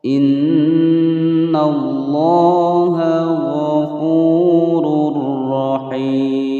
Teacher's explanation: Innallaha ghafurur rahim. Inna, nun bertasydid ya, ditekan ditahan selama 2 ketukan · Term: ghunnah musyaddadah